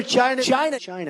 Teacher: he's really putting a lot of emphasis on the chai and then not so much emphasis on the other part so I would just say China yeah it's very relaxed and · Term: intonation